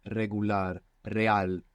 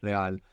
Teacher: I want to talk about this R. An initial R, like in regular, in most Spanish dialects, it's a rolling R. You get this flick of the tongue.